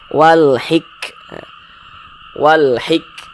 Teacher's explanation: Nah, seperti percikan kecil. Karena huruf kaf ini dia salah satu huruf yang memiliki sifat hamas